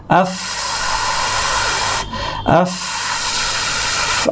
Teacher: খুব একটা ফ্যাশফ্যাসে একটা সাবলীল আওয়াজ প্রচুর বাতাস এবং প্রচুর আওয়াজ এটা হচ্ছে ফা এর আওয়াজ